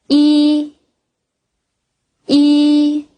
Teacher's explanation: The upper and lower lips are flattened The upper and lower incisors are close The tip of the tongue against the back of the lower teeth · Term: i sound